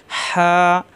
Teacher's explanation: কণ্ঠনালীর মাঝখানে চাপ দিয়ে হা